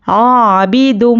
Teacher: तनवीन के बाद इदगाम मीम आया है तो दाल को मीम से मिलाकर गुन्ने के साथ पढ़ेंगे